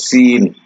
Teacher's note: আর একটা হলো সিন, সিন উপরের তালুর মধ্যবর্তী স্থান থেকে সিন, জিহ্বার মধ্যভাগ আর উপরের তালুর মধ্যভাগ একসাথে লেগে সিন।